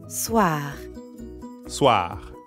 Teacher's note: soir also ends in R. So we've got that really light gargling in the throat again.